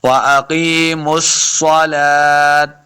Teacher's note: لام کے اوپر کھڑی زبر ہے، اس کو 2 حرکات لمع کرنا ہے، واو خالی ہی رہے گی.